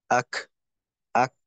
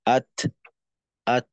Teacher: প্রথমে আওয়াজটা মাখরাজে আটকাবে। তারপর মাখরাজ থেকে পৃথক হওয়ার সময় একটু বাতাস বের হয়ে যাবে। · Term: কাফের উচ্চারণটা